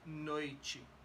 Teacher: It's unstressed. The E becomes an I.